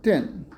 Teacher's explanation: Or, instead of thin /θin/, it’s pronounced as tin.